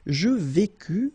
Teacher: final S not pronounced